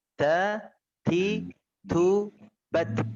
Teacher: Ada nafas yang mengalir di ta terakhir itu. Di huruf batnya. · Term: hamas